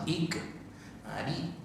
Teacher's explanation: sebenarnya kerana kita nak sebut huruf kaf tu dia bersifat hamas